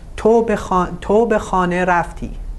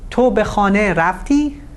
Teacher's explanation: if you change the intonation to rising intonation and putting the stress at the end of the sentence, specifically the verb, you have a yes/no question.